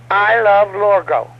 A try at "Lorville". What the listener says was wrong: Not Lorgo. I don't know who the hell that is. It's Lorville. Ville, as in vile. Lorville.